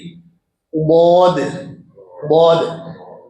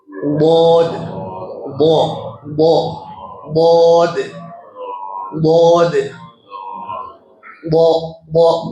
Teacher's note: जबान के किनारे को अब देखिए, बहुत जबान के किनारे को ऊपर नीचे दाढ़ों की जड़ से लगाने से बौद अदा होता है।